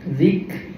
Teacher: ada hams bunyi bisikan angin